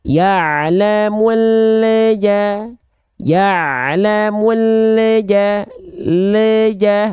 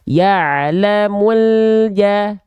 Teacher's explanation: huruf lam suka mantul karena lidah kita keburu turun duluan sedangkan huruf berikut setelah lamnya enggak langsung kita lafalkan jadinya ada bunyi pantulan di sana